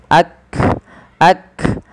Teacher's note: panggal lidah kita dan Kaf memiliki Salah satu sifat yang pertama adalah syiddah tertahannya suara